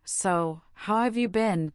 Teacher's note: a warm so how have you been with a slight stress on have sounds genuinely interested